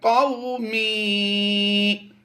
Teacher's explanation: قو واو لین ہے، اسے لمبا نہیں کریں گے، یا مدہ کو ہم نے لمبا کرنا ہے۔